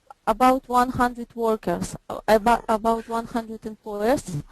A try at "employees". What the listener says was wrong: Employees or employers? I'm not sure. It sounds like you say employers. Employees.